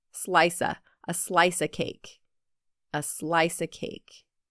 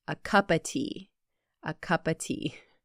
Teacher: of is often reduced to Simply uh